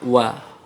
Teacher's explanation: kalau wawu tidak nempel, ya, tidak sampai dua bibir atas bawah itu tidak sampai tidak nempel, tidak tertutup. Wa. Kalau mim dan ba, untuk mim dan ba kedua bibir harus rapat.